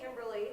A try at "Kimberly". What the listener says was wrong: It's pronounced Kimbar L. There's no E. The E is silent.